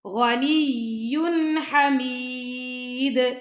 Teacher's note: دال پہ ہم کلکلا کریں گے